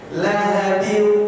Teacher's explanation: Hanya 2 harokat saja, karena itu adalah idgham bi gunnah. Gunnahnya itu hanya 2 harokat.